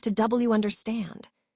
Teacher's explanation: Notice how the W sound links these words together, making the phrase flow smoothly.